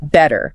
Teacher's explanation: in British English, it's usually a very clear, crisp T sound. Better. Much sharper.